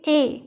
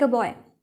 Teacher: in natural speech we don't say 'ae' we say 'uh'